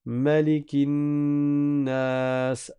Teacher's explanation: Mais ici dans Surat An-Nas, on récite pas avec la prolongation, on récite Malikin Nas.